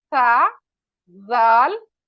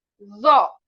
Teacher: सा और जाल बारीक पढ़ेंगे जो को हम मोटा पढ़ेंगे